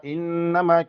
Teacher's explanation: انما کنون مشدد دی غنه کیږي